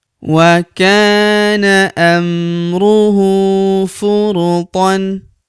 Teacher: Huruf hu kita panjangkan dua harakat karena berharakat u terbalik seperti ini.